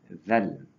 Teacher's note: Perkara yang kita kena perhatikan makhraj tempat keluar huruf zal dan zai. Zal iaitu huruf yang mana berada di hujung lidah bertemu dengan gigi atas